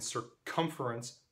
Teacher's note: So here we see again, the stressed syllable is the first one of most of these words, but in circumference, the second syllable is the stressed syllable